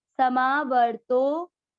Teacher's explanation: पहला चरण स मिया मिक्स करेंगे समा, व मिया मिक्स करेंगे व, तो के ऊपर आधार है, व के साथ आधार पढ़ना है वर तो, समा वर तो के बाद में है अवग्रह, आपको तो की मात्रा को लंबा खींचना है